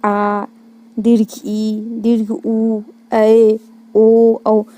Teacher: दीर्घ स्वर जिसके उच्चारण में हर्ष स्वर की तुलना में, याद रखना, हर्ष स्वर की तुलना में 2 गुना समय लगे